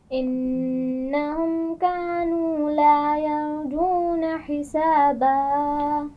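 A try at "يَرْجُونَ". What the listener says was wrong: یرجون، را کو پر پڑھیے۔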